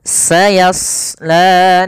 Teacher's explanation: Di sini pada lafal shad tebal, karena huruf shad salah satu sifatnya adalah isti'la, yaitu pangkal lidah terangkat. Yang kedua idbaq.